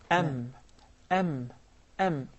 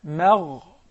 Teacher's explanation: No, never. So the meme is always Muraqqaq. harfun muraqqaq.